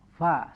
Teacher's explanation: Fa ini maka harus ada suara desis ya, ketika membaca huruf fa itu hidup atau juga mati. Ya. Di sini pa-nya kan dipatah, jadi fa seperti itu ya, dibacanya.